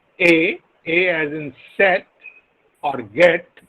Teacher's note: a front unrounded vowel between half closed and half open